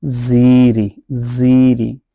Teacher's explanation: یہ یا کی وجہ سے زا کھینچ کے پڑھا جا رہا ہے۔